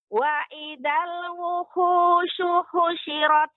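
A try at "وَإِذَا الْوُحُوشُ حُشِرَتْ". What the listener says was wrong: Ya, nanti terus dilatih, Nek, ya, untuk agar lebih lembut lagi pengucapan ha, dia tidak ada hentakan seperti wuhu, wuhu. Di sini ada hentakan. Hu. Yang benar hu, hu, hu. Ada sifat ha.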